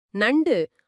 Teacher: நாவின் நுனி உங்க மேல்வாய் பல்லின் அடிப்பகுதியை தொடுவதால் இந்த நகரம் பிறக்குது